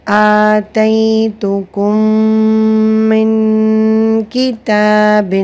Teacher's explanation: یہاں پر درمیان میں ہم نے غنہ کیا ادغام شفوی کی وجہ سے، اور نون ساکن کے بعد جو غنہ ہوا ہے وہ اخفاء کا قاعدہ ہے، نون ساکن کا اخفاء کا قاعدہ۔